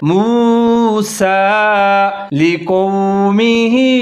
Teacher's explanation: قاف کے اوپر زبر ہے، موٹا کر کے پڑھنا ہے، واو ساکن کے ساتھ ملا کے پڑھنا ہے